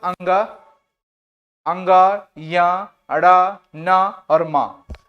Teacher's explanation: पंचम अक्षर है और इनका उच्चारण स्थान नासिका होगा